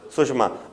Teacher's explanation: यहां पर ई आया है, इसके बाद मूर्धन्य शा, मूर्धन्य शा के पहले ई आया है तो मूर्धन्य सॉरी दंत सा, दंत सा के पहले ई आया है तो दंत सा मूर्धन्य शा में बदल जाएगा